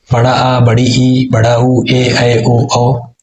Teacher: वे स्वर जिनके उच्चारण में ह्रस्व स्वर की तुलना में 2 गुना समय लगता है उन्हें दीर्घ स्वर कहते हैं। इन्हें द्विमात्रिक स्वर भी कहा जाता है।